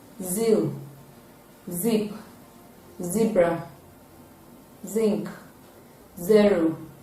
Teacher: Raising the tip of the tongue to the alveolar ridge and the middle of the tongue touching the roof of the mouth. It is a voiced alveolar fricative sound, and its spellings include double Z and Z.